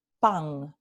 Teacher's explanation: andaluz luego un fenómeno que ustedes conocen bien no la nasal la nasal alveolar no cuando está al final de palabra se vuelve en una velar